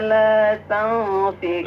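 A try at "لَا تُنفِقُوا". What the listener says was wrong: la tunfiqu, harokatnya jangan la tanfiqu tetapi la tunfiqu.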